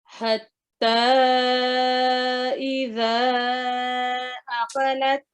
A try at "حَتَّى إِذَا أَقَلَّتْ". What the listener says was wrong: عقلت نہیں ہے، لام پر تشدید ہے. اقلت